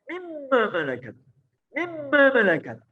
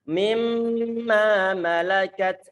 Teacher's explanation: Karena makhrajnya dibuntu. Di saat hidung kita itu bergetar, itu adalah pengaruh gunnah yang terdapat dalam suara nun yang telah diidghamkan dalam suara mim, disertai dengan gunnah di situ. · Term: idgham bi gunnah